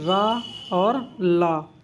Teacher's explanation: फिर दंत मूल से कौन से बोले जाते हैं, रा और ला